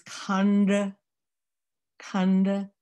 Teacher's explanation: the d sound is not english it's not dutch it's not german it's not french the tongue is actually on the upper palette · back further so your tongue is actually reaching up to [Music] tongue reaches up to the dome in your mouth and that's another d sound so it sounds different